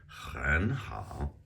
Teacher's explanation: you get that aspirated H where it's sounds like you're gonna spit